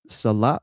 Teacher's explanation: Salah with the emphasis on the second syllable.